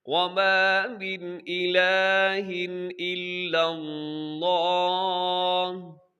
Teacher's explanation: من میں بھی اظہار ہے، الہ میں بھی اظہار ہے، غنہ نہیں کرنا، تیزی سے پڑھ دینا ہے